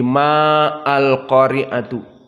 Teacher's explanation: Maka dari segi ilmi tajwid, maka tidak ada perbedaan dengan yang pertama al-qari'atu mal qari'atu, hanya ditambah dengan ma. Dan ma di sini meskipun ada alif, namun tidak dibaca mat tabi'i